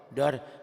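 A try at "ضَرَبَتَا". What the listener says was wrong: Jangan dua kali. Dorobata gitu.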